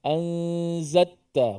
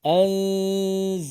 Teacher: Sepatutnya lam itu dimatikan, dizahirkan mati itu. Anzalta. Jangan anzatta ataupun diidghamkan.